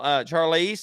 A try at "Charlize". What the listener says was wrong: No, it's pronounced SH, Charles, but that's fine.